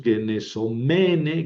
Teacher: En cambio, el femenino tiene el acento en la penúltima, es una paroxítona.